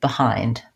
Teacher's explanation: the stress in this word is on the hind syllable. And that's the diphthong I, just like in the word I am. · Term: first syllable is unstressed